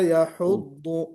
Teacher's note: کوشش کیجئے کہ ہا جو ہے وہ اندرون حلق سے نکالنا ہے